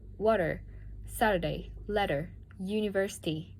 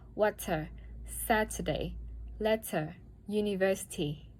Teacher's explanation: in American English this sound is often made with a voice flap similar to a very fast d a t water Saturday letter